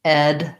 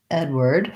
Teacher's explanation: Edward, we have ed, the red tent vowel, Edward, first syllable stress as well. The W-A-R-D sounds like word, Edward, word, like the word were plus D.